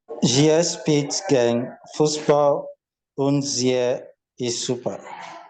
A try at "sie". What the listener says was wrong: Bear in mind, sie is only a long E. There is no pronounced E here. Sie. So the combination of EE is always pronounced as a long E.